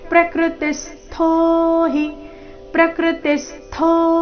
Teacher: ಮೇಲೆ ಆಘಾತ ಥೋ ಮಹಾಪ್ರಾಣ ದೀರ್ಘ